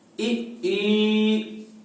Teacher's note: इसके बाद में आता है ई तथा ई का जब हम उच्चारण करते हैं तो जीवा तालु से स्पर्श करती है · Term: तालव्य स्वर